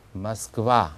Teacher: 그 다음에 러시아의 수도 우리는 보통 모스크바 그러는데 강세가 뒤에 있죠. 그래서 와는 맞는데 앞에 있는 오를 오라고 하지 않고 얼버무려서